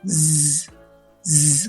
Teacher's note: Si ustedes la pronuncian z, z, como una abejita, ese sonido también vibra en la garganta, al igual que la M.